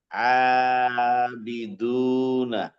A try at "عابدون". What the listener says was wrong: জি এবার ক্লিয়ার আসছে।